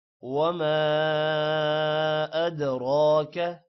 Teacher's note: دال پر قلقلہ ہے، را موٹا ہوگا